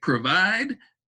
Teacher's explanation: provide has that long O sound, because in that first syllable, it makes that O say its name